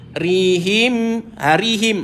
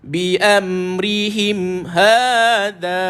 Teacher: Ikhfa Syafawi ada dua wajah satu rapat bibir satu renggang bibir